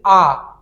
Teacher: जब आ का उच्चारण करते हैं तो मुख पूरा खुल जाता है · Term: विवृत स्वर, विपरीत स्वर